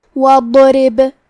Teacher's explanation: کیونکہ را کے نیچے زیر ہے تو یہاں را کا حکم ہے ترقیق، ہم حرف الرا کو پتلی آواز میں پڑھیں گے. آخری میں با پہ جزم ہے، یہاں با کا حکم ہے قلقلہ. · آخری میں با پہ جزم ہے، یہاں با کا حکم ہے قلقلہ. قلقلہ کا معنی ہے حرف ساکن کو ہلانا، تو ہم با کو ہلاتے ہوئے یہ کلمہ کو پڑھیں گے · ہم یہ حرف کو بھاری آواز میں اور منہ پھلا کے پڑھیں گے، اور کیونکہ اس پہ جزم ہے لہذا ہمیں حرف الضاد کو ظاہر کرنا ہے